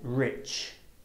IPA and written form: rɪtʆ (rich)